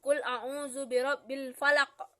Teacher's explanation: kolkolah kubro yaitu pantulannya yang memiliki pantulan kuat yang berada di akhir.